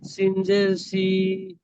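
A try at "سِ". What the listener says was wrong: সিনজের সি, সিনজের সি বলে টানছেন, টান হবে না ওটা। সিনজের সি, তাড়াতাড়ি।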